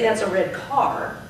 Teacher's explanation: car now became a content word because car is the last word. The last content word is longer.